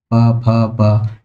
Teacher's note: पा वर्ग की बात करें तो प हमारा प फ प, इसमें हमारी जीभ का कोई हिस्सा कहीं भी टच नहीं हो रहा, ओनली बोलने में इसमें हमारा सिर्फ होठों का ही मूवमेंट देखने को मिल रहा है